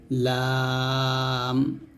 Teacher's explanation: হবে মানে কাফ এরকম ভাবে তারপর হচ্ছে হচ্ছে লাম যেবার আগা সামনের উপরে দুই দাঁতের মাড়ির সঙ্গে লাগিয়ে লামটা উচ্চারণ করবেন পাতলা করে